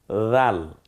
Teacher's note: জিম, জিব্বার মাঝখান ওই বরাবর তালু। রাল, নরম আওয়াজে, জিব্বার আগা, সামনের দাঁতের আগা, রাল। জ, ওই জই বলবো জালের মতো, কিন্তু মুখটা খানিকটা একটু গোল করে নিয়ে আসলেই হয়ে যায়, জিব্বাটা একটু গোল করলে জ উচ্চারণটা হয়ে যায়।